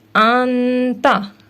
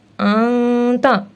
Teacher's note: ہم اس میں نون ساکن کو ظاہر کر کے نہیں پڑھیں گے بلکہ اخفا کریں گے